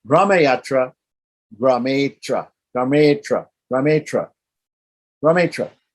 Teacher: So in order to make it flow, I just drop the A